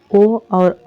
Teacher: ओ और औ का उच्चारण स्थान कंठ और ओष्ठ से किया जाता है